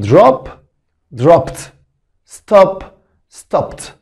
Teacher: بعد الب ساوند الصوت الاي دي ت، فتبقى drop dropped، stop stopped، stopped stopped، مش stopped ولا stupid، stop stopped.